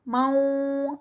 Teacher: اس کو بالکل لپس کو راؤنڈ کر کے اس کو ادا کرتے ہیں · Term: ادغام